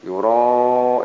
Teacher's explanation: ini ada tanda bendera panjang, yuro ini 6 harakat panjangnya